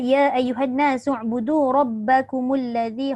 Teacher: Semua huruf nipis, semua huruf istifal.